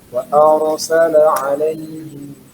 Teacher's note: Nah, kalau di sini ro-nya ro sukun sebelum berharokat fathah harus dibaca tebal